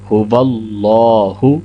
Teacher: یہ ہا ہے جو کہ حلق کے نیچے والے حصے سے ادا ہوتی ہے